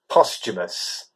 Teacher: The emphasis is on the first syllable, and it's, as you say, it's not post, it's post.